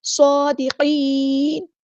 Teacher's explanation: نون کو ہم وقف کرتے ہوئے ساکن کر دیں گے، اور یہاں پہ مد عارض بھی ہوگی۔